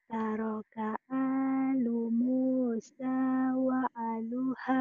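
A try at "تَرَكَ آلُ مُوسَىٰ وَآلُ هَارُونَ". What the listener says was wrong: Wa alu. A-nya panjang. Lagi.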